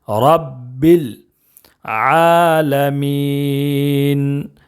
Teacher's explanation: اس کو عین پڑھیں گے، حمزہ نہیں پڑھنا